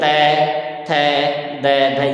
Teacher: ऊपर वाले दांत, उन दांतों की जड़ों में तय थ द ध, ये इस प्रकार से दंती वाला मामला बनता है